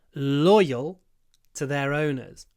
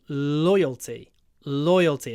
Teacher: their owners loyal the stress is on the oi so know a nice long L at the beginning with your lips forward in the O position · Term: a stretchy L